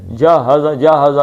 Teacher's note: اس کو سینے سے یعنی حلق کے نچلے حصے سے ہا نکالنی ہے. جہزا جہزا نہیں جہزا نہیں جہزا سینے کی طرف حلق کا جو سب سے نچلا حصہ ہے.